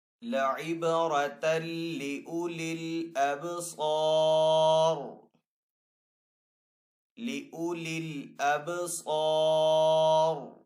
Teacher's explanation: وقف کرنے کی صورت میں را کو ہم یہاں پہ ساکن کریں گے. را جب وقف کی صورت میں ساکن ہوگا تو را کو ہم یہاں پہ پر پڑھیں گے کیونکہ پہلے والے حرف کے اوپر زبر ہے